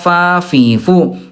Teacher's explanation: Contohnya huruf fa. Huruf fa kan tempat hurufnya bibir dalam bagian bawah disentuhkan dengan ujung gigi seri atas